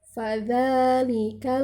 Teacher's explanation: cara membacanya di bibir bagian bawah menyentuh gigi atas bagian depan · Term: huruf bibir